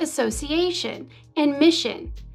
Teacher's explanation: the place of articulation of a consonant shifts to a more palatal or central position in the mouth · The original sound s softened to sh, a sound more typical in French. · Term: palatalization